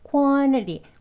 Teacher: quantity 약간 혀만 이동하면서 그게 소리가 묻혀서 나는 거지 그냥 빼고 생략하고 발음하는 건 아니에요. 그래서 quantity 부드럽게 연결되니까 소리가 앞에 있는 니은 소리에 이어지면서 나는 소리인 겁니다.